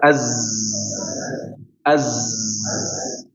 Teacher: huruf za ini ketika disukun atau ditasydid dia menggetarkan di area gigi ya